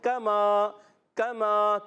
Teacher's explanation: कमा, मीम अलिफ ज़बर मा, ये भी अलिफ मद्दा है, मीम अलिफ ज़बर मा, अलिफ मद्दा बन गया, इसको एक अलिफ खींचना है। काफ का ज़बर नहीं खींचेंगे, कमा गलत हो जाए, पढ़ेंगे हम कमा कमा, काफ नहीं खींचा, काफ का ज़बर नहीं खींचा, मगर मीम अलिफ ज़बर मा हमने एक लंबा गया, कमा, क्या पढ़ा?